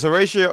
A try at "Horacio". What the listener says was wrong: Don't pronounce the H. Just say Horacio.